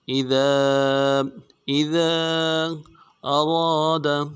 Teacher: امرہ اذا اراد، اذا، حمزہ کو نون سے ادا کرنا ہے، دال کو باریک کریں گے، دال کے بعد الف مدہ ہے، مد عارض ہے ، دال الف مدار میں کھینچیں گے، اذا، اذا اراد، اراد،